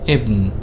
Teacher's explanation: Without hamza, there is not so much of a glottal stop, and it can sound as a or e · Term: alif without hamza